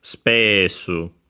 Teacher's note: low, high, and then everything else low